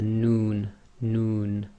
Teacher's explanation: Your lips actually go a bit round with the Noon, Noon. That's group 6.